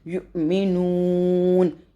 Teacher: حمزہ کے اوپر ساکن، تو یہاں پہ جھٹکا دیں گے